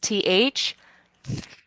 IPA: θ